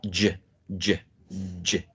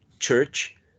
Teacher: So in the articulation of an affricate sound, there are two movements in terms of what's going on in your oral cavity. First, you stop the air, right, and then you let it go gradually, as when you say church.